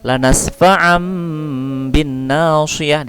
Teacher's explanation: Di sini dihukumkan iklab karena tanwin an bertemu dengan huruf ba. Ya, tanwin an berubah bunyinya menjadi mim. Ya, ba adalah huruf iklab.